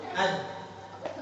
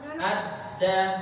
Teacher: ketika diberhentikan huruf dal ke makhrajnya dulu ad, tertahan kuat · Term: sifat syiddah